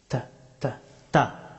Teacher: তা হরফটি উচ্চারিত হয় জিহ্বার অগ্রভাগ এবং সামনের দুই দাঁতের মাড়ি।